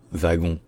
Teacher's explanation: ça été interprété comme se prononçant vagon en français de France · Mais quand c'est passé en français, ça a été interprété comme se prononçant wagon en français de France, parce qu'en fait on s'est inspiré du W allemand qui se prononce ve